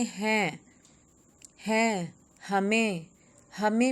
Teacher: तो ये बहुत ही महत्वपूर्ण बात है जानना कि अगर यही चंद्र बिंदु किसी मात्रा के साथ आता है, जैसे हैं, हमें, हमें में ह का उच्चारण मुख से हो रहा है और म के ऊपर अनुनासिक है तो उसका उच्चारण नाक से हो रहा है।